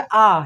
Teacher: जब आ को हम बोलते हैं तो हमारा मुख ज़्यादा खुलता है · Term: विवृत स्वर